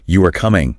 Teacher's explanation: You can sometimes hear people say things like you are coming with a rising tone. Yeah. Very informal, almost like checking.